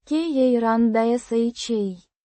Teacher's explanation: Pronounced. ka-ran-dah-SHA. With the stress on the last syllable.